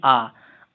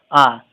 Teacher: जैसा कि आप बोल के देखेंगे आ, तो पूरा मुंह खुल जा रहा है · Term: विवृत